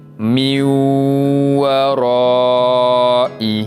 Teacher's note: Cara bacaannya, nun mati tu kita tak bunyikan, kita masuk terus kepada huruf waw dan dibaca dengan bacaan dengung